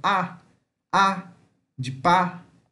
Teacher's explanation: um A aberto, como se tivesse um acento